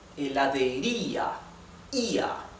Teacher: Y el hiato está aquí. Las dos vocales se separan. Both vowels are separated. La sílaba tónica está en la I.